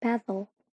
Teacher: It is no vowel is found, and a consonant, either l, r, or a nasal, stands as the peak of the syllable instead of the vowel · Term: Syllabic consonant